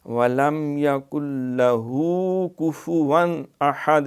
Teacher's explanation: یہاں اظہار ہے کفواً، یہ واو کے اوپر 2 زبریں تنوین اور آگے احد حمزہ آ گیا ہے، تو یہاں دیر نہیں لگائیں گے، نہ غنہ کریں گے نہ اخفا کریں گے، بلکہ اظہار ہوگا